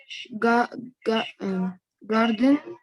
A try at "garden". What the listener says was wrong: no, in British without R. Garden.